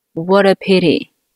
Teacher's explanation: What▁和▁a▁两个词连在一起，辅元连读▁,t▁在两个元音发音中间倾向于发的这样的音。有一个小小的浊化